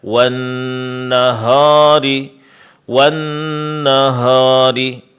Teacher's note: Membaca huruf ha dengan tabkhimuha dengan ditebalkan